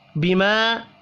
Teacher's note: بما الف مدہ ہے، ایک الف کے برابر اس کو بھی کھینچ کر پڑھیں گے